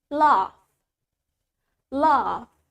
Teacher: Well, in British accent, we have longer A. So we say laugh.